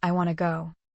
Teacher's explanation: A very common one is want to becoming wanna. The T in want and the two merge into a quick flap, so the two words sound like one.